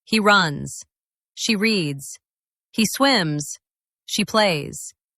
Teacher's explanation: Feel your throat. It vibrates slightly for that Z sound.